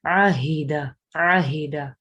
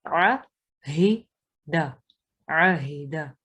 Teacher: عاہدہ میں عین اور ہا کی آوازیں علیحدہ علیحدہ ہوں گی